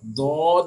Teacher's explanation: ज़बान की करवट चाहे वो लेफ्ट तरफ की यूज़ करें आप या राइट तरफ की यूज़ करें, वो ऊपर के दाढ़ों की जड़ से लगकर अदा होता है